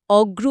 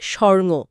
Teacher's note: যেমন অগুরু শব্দটা থেকে অগ্রু হয়েছে, সুবর্ণ থেকে স্বর্ণ। এখানে ভেতরের উ বা অধ্বনিটা লোপ পেয়েছে। এটা সাধারণত ঘটে যখন শব্দটা একটু দ্রুত উচ্চারিত হয়। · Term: মধ্য স্বরলোপ